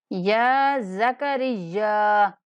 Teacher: یا کو 1 سیکنڈ تک لمبا کریں گے۔ زکریا، را کو یا کے ساتھ ملاتے ہوئے یا کو سختی سے پڑھیں گے اور 4 الف تک لمبا کر کے پڑھیں گے۔